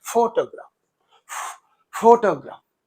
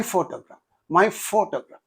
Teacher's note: in this photograph, only the first syllable receives the stress, but not the second one. But it is here shown as the second syllable is receiving the stress.